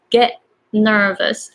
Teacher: So this is the case, get nervous, especially there is N right after. So T and N are pretty much the same. The tongue position is pretty much the same. So you don't really have to pronounce T strongly. So just go get nervous. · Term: glottal